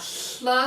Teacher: It's a voiceless lateral fricative